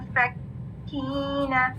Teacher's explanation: کاف کی شد, آواز مخرج پہ بند ہو رہی. منفکین, یا ساکن اس سے پہلے کسر اور درمیان میں یا مد مارک کر لیں.